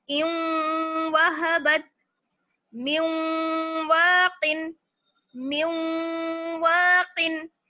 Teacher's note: نون کی آواز اور تنوین کی آواز جو ہے وہ باقی رہے گی